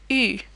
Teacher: The U sound is the other challenging sound because it doesn't have an equivalent in English either. It almost sounds like a very rounded E sound. It's pronounced U.